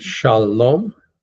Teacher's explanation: accented on the last syllable